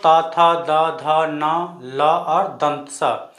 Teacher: ये सभी वर्ण ऐसे हैं जिसका उच्चारण हम दांत की मदद से करते हैं